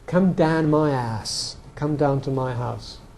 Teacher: in London you get this vowel sort of long ah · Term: mouth shift